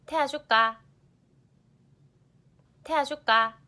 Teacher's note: the wa diphthong vowel in 태워줄까 is replaced with a simpler ah vowel